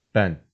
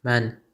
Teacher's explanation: some of the words starting with the letter b in turkish start with m in azerbaijani